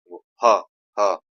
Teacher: ह जो है कंठ से भी है, महाप्राण से भी, और घोष से है। घोष मतलब गूंज।